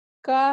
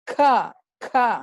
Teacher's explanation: ಕ ಹೇಳುವುದಕ್ಕೂ ಖ, ಖ ಅಂತ ಒತ್ತಿ ಹೇಳ್ತೇವೆ. ಇದು ಮಹಾಪ್ರಾಣ ಅಂತ ಕೂಡ ಹೇಳ್ತಾರೆ ಇದನ್ನು.